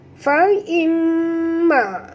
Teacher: mim bertasydid wajib al-ghunah, wajib dengung